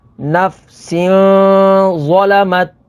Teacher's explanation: یہاں پر ناظرین تنوین کے بعد ظا ہے، ظا حروف اخفا میں سے ہے تو یہاں پر اخفا ہوگا یعنی غنہ کر کے پڑھیں گے